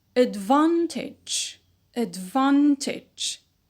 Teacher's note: in the word advantage we used to have a schwa at the beginning of the word but when we have added a the stress shifting suffix we